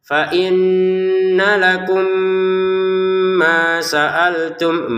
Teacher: mimnya bertemu mim mim yang pertama masukin kepada mim yang kedua lalu Dibaca dengungan